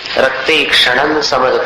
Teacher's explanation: क्षणम के अनुस्वार का उच्चारण न के समान।